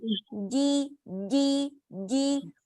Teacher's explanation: جیم باریک جیم نہیں جیم. جیم کے ساتھ سانس نہیں آئے گی